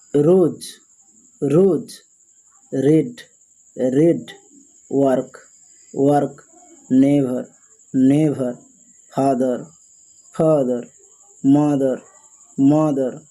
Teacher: when people pronounce R sound very strongly, this is called rhotic English